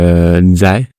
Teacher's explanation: le Z, je le prononce comme un D avec un Z